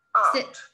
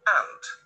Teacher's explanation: se pronuncia un poco más largo al inicio, y hormiga es corto y se acentúa la T al final, mucho más fuerte que tía.